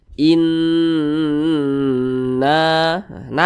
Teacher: huruf yang memiliki harakat kasrah Nah berarti ini hukumnya ghunah musyaddadah bacanya itu digunahkan digunahkan itu ya didengungkan E panjangnya itu dua hingga 3 harakat · Bacanya itu digunnahkan itu ya didengungkan. Nah, panjangnya itu 2 hingga 3 harokat. Inna, nah dibaca panjang. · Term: gunnah musyaddadah